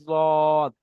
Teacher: জিবের কিনারা এবং তার বরাবর উপরের মাড়ির দাঁতের গোড়ার সাথে লাগিয়ে উচ্চারিত হয় জদ। জিবের কিনারা মানে এই সাইডটা, এটা হলো সামনের আগা, আর সাইডে কিনারা। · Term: জোয়াদের মাখরাজ